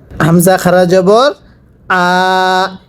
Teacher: এই হামজার মধ্যে এক আলিফ টানতে হবে।